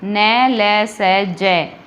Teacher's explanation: न, ल, स, ज का उच्चारण करते समय जीभ वत्सर्य क्षेत्र को स्पर्श करती है, अतः ये ध्वनियाँ वत्सर्य ध्वनियाँ कहलाती है।